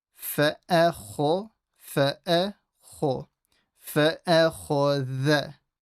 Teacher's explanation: Fa'a empty, kho heavy, the empty again.